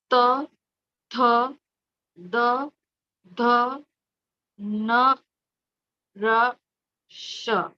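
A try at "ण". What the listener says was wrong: It's not na. N with a dot below is ana. Ana. The tongue should touch the upper palate, the middle of it, right? Ana.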